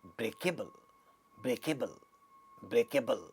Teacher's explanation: So, in such derived words from nouns and adjectives, we have we have a stress on the original word. That is, if it is derived from break, the stress is on break.